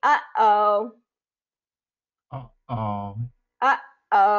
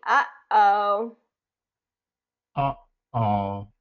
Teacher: that's the kind of the stop of the vocal cords that we want between those sounds